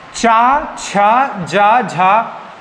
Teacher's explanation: चा, छा, जा, झा ये स्पर्श संघर्षी व्यंजन है।